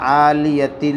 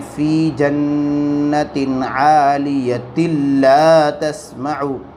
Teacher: अब मिला के पढ़ने में यहाँ पर क्या कायदा होगा, आलियतिल, ता लाम दो ज़ेर तिल, लाम अलिफ ज़बर ला, आलियतिल ला तस, दो ज़ेर की तनवीन के बाद लाम और रा की सूरत में इदगाम बिला गुन्ना होता है